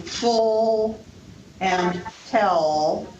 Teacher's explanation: The dark L, as in full and tell, which occurs following vowels or at the end of a syllable.